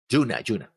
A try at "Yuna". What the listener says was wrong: It's with Y. Yuna. I don't know if that's actually how it's pronounced. I'm not mocking you about pronunciation, but you're saying Juno. And I'm hearing Juno.